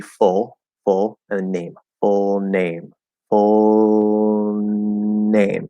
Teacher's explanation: first full is going to be a half l or a dark l as it's commonly called · full is going to be a half L or a dark L, as it's commonly called. Um, and so even if you're going up into the N in name, you don't have to do a regular L.